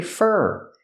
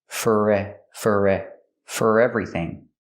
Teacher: When I say thank you for, I don't say for, I say fur, because it's not stressed.